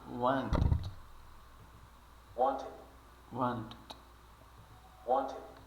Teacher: É um I, esse I aqui, como eu já falei, é um I curto. Para nós, soa mais como um E.